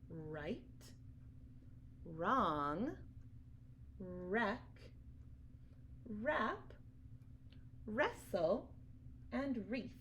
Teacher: together now when we have a W and an are together we usually only hear the R sound so the the W is a ghost you can't hear it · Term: ghost letter W, ghost letter WR